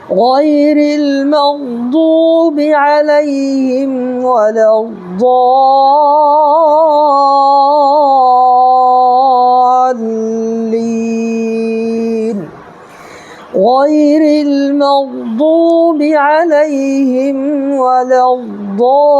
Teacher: جب یہاں وقف کریں گے یعنی کہ رک جائیں گے تو یہ نون جو ہے زبر اس کو ہم ساکن کر دیں گے